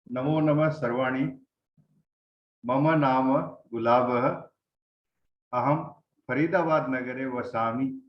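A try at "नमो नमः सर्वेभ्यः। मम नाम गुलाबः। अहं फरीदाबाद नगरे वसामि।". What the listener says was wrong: Very nice. Very good.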